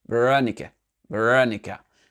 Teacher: Le VE, donc il n'a pas prononcé l'accent, il n'y a eu pas d'accent tonique dessus, d'accord? Ça a été réduit. Le RO, c'est là où il y a eu l'accent tonique, raw, d'accord?